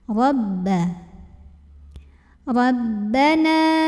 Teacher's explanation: Rabbana, jadi ada em-nya gitu. Nah, ini tekanannya di bibir ya, tanpa memasukkannya ke hidung. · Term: ba tasydid